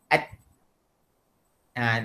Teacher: Ta kat mana? Ujung lidah. Ni. Pergi ke mana? Pangkal gigi depan. Sini. Kat belakang gigi depan ni. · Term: huruf ta